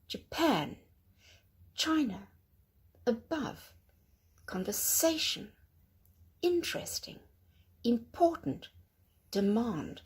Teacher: can you hear that the syllables that I haven't stressed tend to be much softer and don't seem to be that obvious?